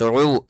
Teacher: عین واو پیش عو، واو ساکن سے پہلے عین کے اوپر پیش ہے، کیا کریں گے؟ تھوڑا سا کھینچ کر کے پڑھیں گے